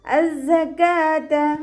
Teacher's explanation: നമ്മൾ തേനീച്ചയുടെ മൂളൽ പോലെ എന്നൊക്കെ പറയാറില്ലേ, ആ ഒരു സൗണ്ട് തന്നെ കൊടുക്കാൻ ശ്രദ്ധിക്കുക കേട്ടോ. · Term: സായ്